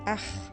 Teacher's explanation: c'est la partie de la langue la plus profonde qui vibre, près de la luette